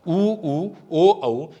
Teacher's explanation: इन सब के अंदर होठों का आकार क्या हो जाता है, उच्चारण करते हुए गोल हो जाता है। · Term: वृत्ताकार स्वर